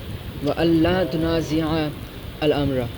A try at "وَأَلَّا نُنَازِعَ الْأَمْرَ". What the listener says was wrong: وَأَلَّا تُنَازِعَ نہیں وَأَلَّا نُنَازِعَ الْأَمْرَ